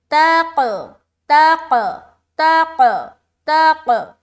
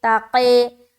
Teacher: جب بھی ہم قلقلہ کرتے نا تو ہماری آواز ٹکراتے ہوئے اوپر کی طرف کھلتی ہے